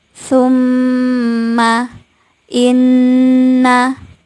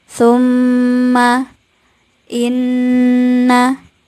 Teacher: Nun dan mim yang bertasdid inilah yang dia nanti akan dibaca gunah atau dibaca mendengung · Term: bacaan gunah